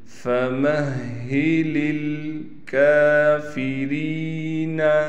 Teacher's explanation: ہا کو ہم نے نکالنا ہے سینے کی طرف سے، اور ہا پر تشدید ہونے کی وجہ سے ہا پر ٹھہراؤ بھی کریں گے۔